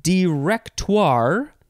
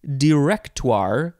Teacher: you can emphasize the second syllable or the third syllable I feel like emphasizing the third syllable is the best way